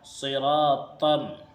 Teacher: ہجہ اس کے اس طرح کریں گے، صاد زیر سی، را الف زبر را، صرا، تا میم دو زبر تم، تا کے بعد یہ جو الف ہے یہ نہیں پڑھا جائے گا، بلکہ ڈائریکٹ اس تا کو میم میں ملائیں گے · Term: ادغام ناقص